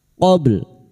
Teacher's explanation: Huruf ba memiliki sifat pantulan, yaitu qalqalah sugra yang mati asli di tengah kalimat qobl. Jangan lupa dipantulkan dan kita lunakkan dengan huruf lam.